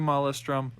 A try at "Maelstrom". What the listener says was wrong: keep pronouncing it like molested. It's Maelstrom.